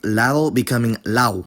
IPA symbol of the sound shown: lao̯